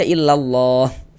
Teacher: Kenapa kok lafaz Allahnya dibaca tebal nih huruf lamnya gitu?